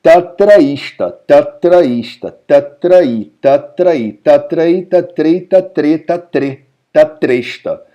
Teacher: E se você tem encontro de um A com I, vira um E. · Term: sandhi